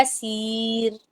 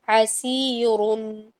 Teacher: حسیر میں یہ باریک را ہو رہا ہے، حالانکہ حسیرن را دو پیش رن، حسیرن میں یہ موٹا را ہوتا ہے